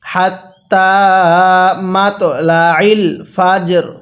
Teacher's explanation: ওয়াকফ করলে হাত্তা মাতলাল ফাজর রটা হালকা উচ্চারণ করব